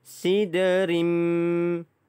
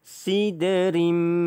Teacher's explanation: Bertemu dengan huruf mim, saya masukkan terus, dia akan jadi tanwin bertemu mim idgham ma'al gunnah, maka masuk dan dengung